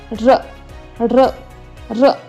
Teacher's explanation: र र रचं उच्चारण स्थान आहे मूर्धा. आपली जिव्हा जिभेचं टोक हे मोडून हे आपल्या टाळूला स्पर्श करतं, त्याच्यामध्ये त्याला मूर्धा असं.